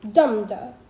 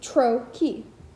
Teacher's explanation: Its paired opposition, metrically, is trochee, which, unlike I am, is the thing it designates, a pair of syllables in which the first is stressed